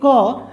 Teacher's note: इस क को बनाने में क तो आ ही रहा है थोड़ा सा, लेकिन साथ में क्या आ रहा है? अ आ रहा है।